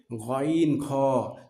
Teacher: খ উচ্চারণের জায়গা হলো হলকের শেষ ভাগ হইতে